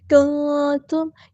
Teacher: نون ساکن کے بعد کاف آیا ہے، کنتم یہاں پہ بھی نون کی آواز کو چھپا دینا ہے، اخفا ہو رہا ہے